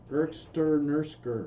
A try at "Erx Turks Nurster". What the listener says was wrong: Erx Turks Nurster. It ends with an R, so there's no K at the end.